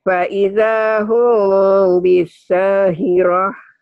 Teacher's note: Fa idza hum bunyi M tapi bindeng